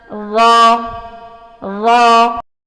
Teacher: زبان کی بیک یعنی زبان کی جو پشت ہے جب تالو سے لگتی ہے تو را ادا ہوتا ہے، یعنی نوک کے ساتھ والا حصہ آپ تصویر میں دیکھ سکتے ہیں۔